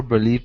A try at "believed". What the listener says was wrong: make sure to pronounce that d okay believed him